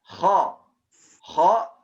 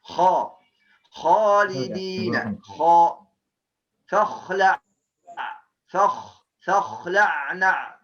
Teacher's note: Ghain dan kha ada sifatnya sama, apa? Isti'la, tebal.